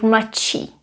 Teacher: Because D is pronounced as T here, so mladší.